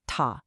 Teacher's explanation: avoid the sharp falling fourth tone